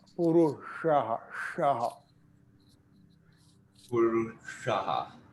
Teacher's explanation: Purushaha is the one sha where you hit the roof of the mouth.